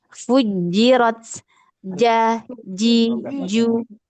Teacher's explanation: makhrajnya atau hurufnya keluar dari tengah lidah. Di tengah lidah ya atau ee was lisan. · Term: huruf jim